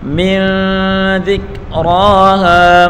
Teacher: انت فیما انت من ذکراہا، میم کو نون کے ساتھ ملا کر پڑھیں گے اور نون ساکن کے بعد اخفا کا حرف ذال ہے تو یہاں گنہ کر کے پڑھیں گے